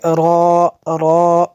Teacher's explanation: زبان کی نوک اور مقابل کے تالوں سے یہ را، را ادا ہوتا ہے، مقابل یعنی اس کے برابر اوپر سے۔